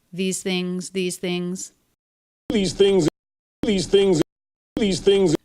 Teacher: the first one is voiced the second one is unvoiced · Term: th sounds